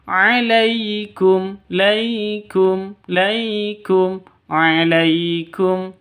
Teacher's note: sifat Lin lentur lemas tidak boleh disentak jangan dipanjangkanaikumaikum jangan dibaca seperti itu salah yang betul alaikum laikum